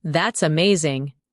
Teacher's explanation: When you say that's amazing, your tone rises with excitement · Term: rising tone